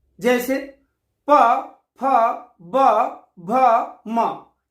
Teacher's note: जिन व्यंजनों के उच्चारण में दोनों ओष्ठों द्वारा श्वास का अवरोध हो, ओष्ठ व्यंजन कहलाते हैं।